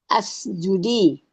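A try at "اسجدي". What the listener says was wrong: Ya, bukan asjudi ya. Kalau tandanya begitu itu bacanya us.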